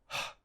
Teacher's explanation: H is a voiceless glottal fricative.